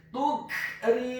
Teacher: huruf ra-nya dibaca tipis, kasrah 1 harokat. Huruf mim-nya dibaca dhammah 2 harokat karena setelahnya ada huruf wawu sukun.